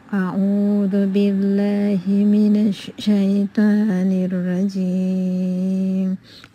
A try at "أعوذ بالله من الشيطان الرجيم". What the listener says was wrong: So أعوذ the عين just need little focusing to make it عو من الشيطان الرجيم the را still need to be heavier رجيم not رجيم أعوذ بالله من الشيطان الرجيم